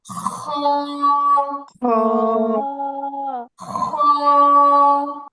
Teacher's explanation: খ খ বলার সময় গলায় খসখস একটা আওয়াজ হবে।